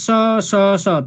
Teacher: स स स तीनटै स उच्चारण गर्दाखेरि हामी एउटै स उच्चारण गर्छौँ, छुट्टा छुट्टै किसिमले स स उच्चारण गर्दैनौँ।